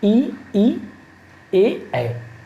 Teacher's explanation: इनके उच्चारण में जीभ के आगे वाला भाग ऊपर उठता है। इनमें कौन कौन स्वर आते हैं, तो ई, ए। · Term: अग्र स्वर